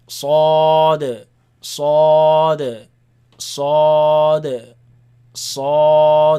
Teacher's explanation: In the middle, they are all 4 heavy letters. So, o, the heavy sound, not the a, but o. In the back of the mouth, you're gonna hear that sound.